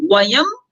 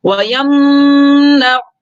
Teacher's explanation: ویم نعو، ویم یعنی کہ میم کو ظاہر کر کے میم کو ادا کرتے ہی فوراً آگے نکل جائیں گے، اس میں غنہ یا اخفا نہیں کریں گے